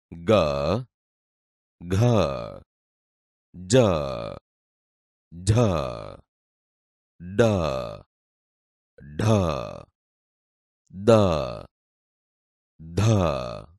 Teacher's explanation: દાખલા તરીકે ક, ખ, ચ, છ, ટ, ઠ, ત, થ. ઘોષ ધ્વનિ નાદતંત્રી સહેજ વધુ કંપનની અવસ્થામાં હોય ત્યારે જે ધ્વનિ ઉત્પન્ન થાય તે ઘોષ ધ્વનિ તરીકે ઓળખાય છે.